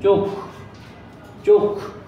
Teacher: খ এর পরে কোনো রকম অ আ অর্থাৎ স্বরধ্বনির উচ্চারণ হয়নি